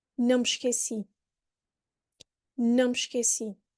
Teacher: I don't have to stop or divorce the word noun from the me, because we hear a nasal sound, which is enough to understand that I did not forget. Plus, the me comes before esqueci.